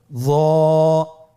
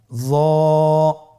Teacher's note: জিহ্বার আগা, সামনের উপরের 2 দাঁতের আগার সঙ্গে লাগিয়ে উচ্চারিত।